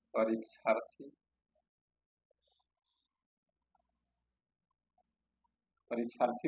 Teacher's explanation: आ plus अ, मतलब दीर्घ और ह्रस्व मिल करके दीर्घ आ बनाएंगे